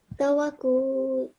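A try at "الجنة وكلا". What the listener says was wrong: So it is that we can't just inshallah with the practice it will be, we can't break the words and read it between or from the end. So al-jannata wa kula.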